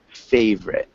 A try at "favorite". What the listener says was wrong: It's a little bit different. It sounds more like favorite. So don't pronounce that O-R sound. Favorite.